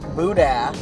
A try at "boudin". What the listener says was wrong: It's not Buddha. You gotta get the nasals working on that one.